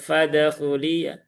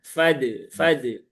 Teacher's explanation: Pantulan dalnya jangan ke arah fathah, Pak.